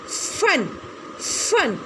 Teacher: फ जो वायु बाहर आती है वह नुक्ता के चलते आती है